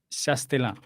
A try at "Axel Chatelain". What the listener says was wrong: Sí, solo le agregaré que, bueno, es más Chatelain, porque S, lo comimos la S, como Axel Chatelain.